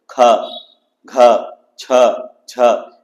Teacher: इसमें ह आ रहा है और ज्यादा ऊर्जा या प्राणवायु निकल रहा है इसलिए इसे महाप्राण वर्ण कहा गया है · महाप्राण, नाम से पता चलता है महा मतलब ज्यादा और प्राण मतलब वायु, अर्थात इनके उच्चारण में अधिक वायु लगता है या निकलता है और हकार की ध्वनि उत्पन्न होती है।